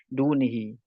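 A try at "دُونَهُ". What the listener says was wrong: Dunah. Ini bukan dunih ya. Dunah. Ya, dunahu.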